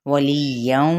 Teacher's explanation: لام کی زیر کو یا کے ساتھ ملائیں گے اور آگے تنوین زبر کو واو کے ساتھ، تو یہاں پہ ادغام ہوگا، ادغام مع الغنہ